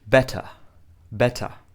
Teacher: they're pronouncing the T like a t and they're actually not pronouncing the r in the same way we do in American English they pronounce it like a not R but a in American